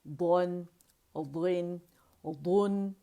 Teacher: موٹائی قائم رکھنی ہے، اسے دن، دن، دن کر کے نہیں پڑھنا. اور نہ نون پہ ہم نے قلقلہ ہے، دن، دن، دن، یہ بھی ہم نے نہیں کرنا، ٹھیک ہے.